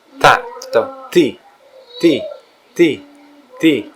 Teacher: Ta itu di gigi dan ujung lidah, di ujung lidah dan gigi bagian atas. Ta atau ti, ti, ti, ti.